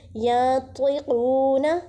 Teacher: قاف کو موٹا ادا کیجیے اور ایک الف کے برابر کھینچیے